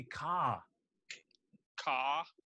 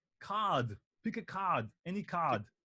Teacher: So that's R dropping. So you drop the R when it's final R and when it's R before a consonant